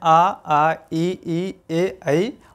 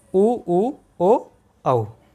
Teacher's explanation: ओठ की स्थिति के आधार पर स्वर के प्रकार कि आवृत्तमुखी स्वर जिसमें आ, ई, ए, ऐ और वृत्तमुखी स्वर ऊ, ओ, औ